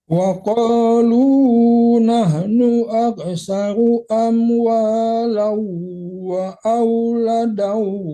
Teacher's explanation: Jangan sebentar tasdid ya Pak, tapi ditarik ke hidung karena itu dengung ya.